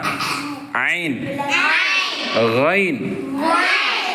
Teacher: அந்த ஐன் தொண்டை குளியில வந்து ஓதணும்